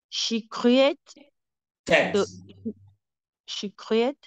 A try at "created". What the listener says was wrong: No, that one is created because there is D at the end.